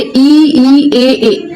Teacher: जैसे इ ई ए आप सारा बोलेंगे ना तो जीभ आपकी कहां पे रहेगी? आगे वाले भाग में। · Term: अग्र भाग